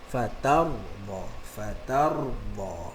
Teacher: Okey, tetapi ra yang tak ada syaddah seperti fatar, ba, ayat yang kita baca, maka kita kena getarkan dia, cuma jangan melampau sangat. Macam yang kita sebut tadi, jangan takalluf sangat.